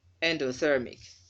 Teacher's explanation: The primary stress mark is on the second to the end, and the secondary stress mark is on the first syllable from the beginning.